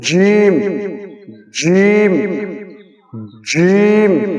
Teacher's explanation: এইটার উচ্চারণ আসতেছে জিহ্বার তালু এবং ওই বরাবর উপরের তালু। উপরের মুখের ভিতরে যে গর্ত রয়েছে গা গর্ত দিকে জিহ্বার তালুটা উপর দিকে আগিয়ে যায়।